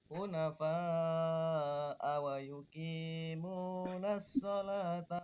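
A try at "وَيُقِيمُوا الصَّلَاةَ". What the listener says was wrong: Tidak ada nasnya ya. Hunafa'a wa yuqimus sholata, bukan wa yuqimunas sholat, enggak ada nanya.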